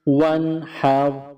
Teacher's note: یہاں نون ساکن کے بعد ہا حروف حلقی ہے تو یہاں نون ساکن پر اخفا نہیں کریں گے۔ اس طرح واو نون زبر ون، واو نون زبر ون، اس کے بعد ہا کے اوپر زبر ہے، اس کے بعد را ہے، را ساکن ہے، را کے اوپر جزم کا نشان ہے، تو ہا اور را کو جزم کی وجہ سے آپس میں ملائیں گے۔